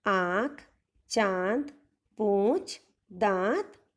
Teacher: next अनुनासिक स्वर, ये स्वर मुख और नाक दोनों से बोले जाते हैं